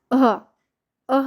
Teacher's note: विसर्ग हा उच्च श्वास सोडून उच्चार ह चा होत असतो म्हणजे कसं झटका देऊन उच्चार होणारा विसर्ग असतो जसं की अह अह म्हणताना कसं झालं ह उच्चार झाला आणि